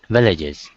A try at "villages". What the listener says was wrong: Yeah, you forgot the S.